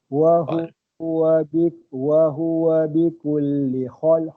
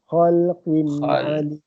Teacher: Dia makhraj huruf kha ni daripada halkum.